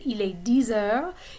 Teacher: the X at the end of 10 becomes Z